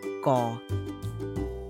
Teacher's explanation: Take note that the Hmong K is not aspirated. Aspirated means it's breathy. It is not breathy at all.